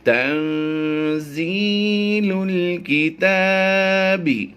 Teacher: یہاں پر نون ساکن کے بعد زا حروف اخفا میں سے ہے، تو ہم یہاں پر اخفا کرتے ہوئے غنہ زمانے کی آواز دیں گے۔